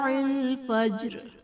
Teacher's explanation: فجر میں جیم حرف قلقلہ ساکن ہے تو یہاں بھی قلقلہ خوب ظاہر کریں گے